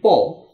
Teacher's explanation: প বললে ঠোঁট দিয়ে হয়, নাক দিয়ে হয় না